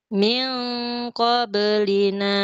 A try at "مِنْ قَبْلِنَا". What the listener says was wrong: Beda makhrajnya dengan yang tadi. Kutubun ko, min ko harus sama. Ulangi lagi, Bu.